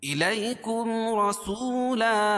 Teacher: میم ساکن کے بعد میم اور با کے علاوہ کوئی اور حرف آئے تو اظہار شفوی ہوگا، اس کو ظاہر کر کے پڑھیں گے